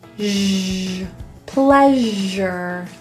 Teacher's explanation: The S in this word is pronounced as a Z. It's kind of like an SH with your voice on.